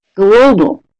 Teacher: The first syllable is stressed more than the second syllable.